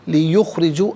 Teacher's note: لیخرجو کا را کے نیچے زیر ہے، را کو باریک کر کے پڑھیں گے